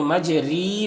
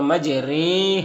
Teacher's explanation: را کے نیچے کھڑی زیر ہے تو کھڑی زیر کو کھینچ کر پڑھیں گے، لیکن اس کو مجہول پڑھیں گے، اس کو رائے امالہ کہتے ہیں، مجہول پڑھیں گے، یعنی مجری نہیں پڑھیں گے بلکہ مجرے، ہاں رے مجہول ہوتا ہے تو اس طریقے سے پڑھیں گے۔